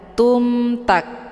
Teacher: Hukum bacaan izhar syafawi jelas tiada berdengung. · Cara bacanya, mimnya dibunyikan secara jelas atau jelas bunyi M-nya. Cukup ditekan saja, tidak perlu ditahan.